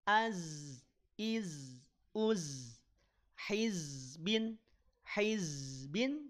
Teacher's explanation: Z itu harus dialirkan suaranya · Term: huruf Zai